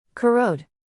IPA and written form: kəˈroʊd (Corrode)